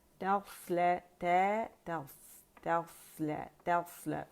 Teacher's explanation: تس نہیں، اسے باریک نہیں کریں گے، موٹا ہے تو موٹائی سے ادا کریں گے